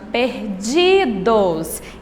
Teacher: É a penúltima, perdidos. Então, a sílaba tônica aqui é o di.